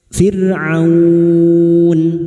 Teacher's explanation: A fir ro sukun yang diduli kasrah dibaca tarkik firun harakat fathah dan bertemu wau sukun kita lunakkan dan diikuti huruf hidup yang dibaca waqaf mad layin empat harakat kita panjangkan